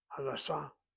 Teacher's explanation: If you accent the second syllable, Sa, Hadassah, that's the hospital.